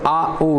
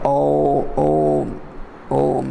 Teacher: So therefore you need not specially utter like Aum, but some people like to, because there are the three A, U, Ma, therefore they want to utter like Aum, but A and U combined becomes O, therefore Om is, that is why we utter commonly Om.